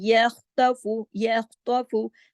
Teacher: خا کو موٹا بھی کرنا ہے خراش کے ساتھ